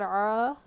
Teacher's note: الف مدہ ہے، مد اصلی ایک الف کے برابر کھینچیں گے